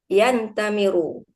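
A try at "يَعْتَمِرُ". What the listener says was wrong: Ifta'ala ini Ya'tamiru. Ifta'ala bukan infa'ala. Ifta'ala. Pakai ain.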